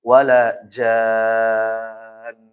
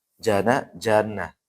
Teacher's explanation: Kalau aslinya kan jana, aslinya mad tabi'i ya. Tapi karena ada tasdid di nunnya, maka dia akan berubah menjadi mad lazim kalimi mutsaqqal. Wajib 6 harokat.